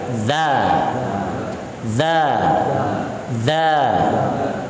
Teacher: Ketika membaca huruf dzal, ujung lidahnya nggak usah ditaikan.